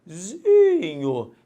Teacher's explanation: Então a sílaba tônica é o zi.